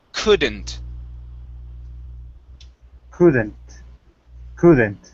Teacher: In this word, the L is silent. We do not pronounce the L.